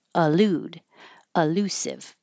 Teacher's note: Elusive. But because the e is not stressed, it can change to uh or i.